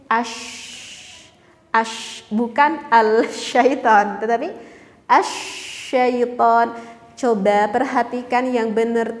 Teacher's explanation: Alif lamnya itu nggak kelihatan atau enggak terdengar oleh telinga kita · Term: idgham